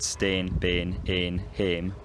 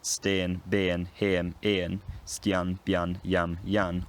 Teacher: all of these have some element pronounced at the front of the mouth, with the tongue at the front of the mouth towards the teeth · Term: front realisations of the goat vowel